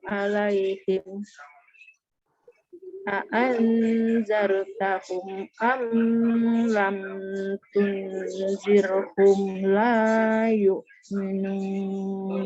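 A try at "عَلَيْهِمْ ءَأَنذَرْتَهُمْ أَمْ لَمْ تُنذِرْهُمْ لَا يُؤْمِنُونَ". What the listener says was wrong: Nah, untuk yang ini yang ada mim sukun, kalau dia depannya ini kan mim sukun ketemu hamzah, ketemu lam, dia kan bukannya mim. Kalau dia nggak ketemu mim atau ba, dia jangan dengung. Jangan ya. Cepet dia Bu, jangan dilam.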